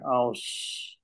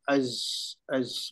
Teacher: kita letak hamzah di depan, lepas tu kita matikan. Jadi dia ada macam bunyi siulan